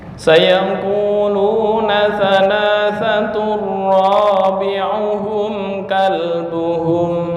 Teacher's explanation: ini tanwin bertemu dengan ra yang disebut dengan idgham bila gunnah